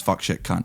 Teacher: And it's because Americans' vowels are long. When I swear as a Scottish person, it's fuck, shit, cunt. It's very short for me.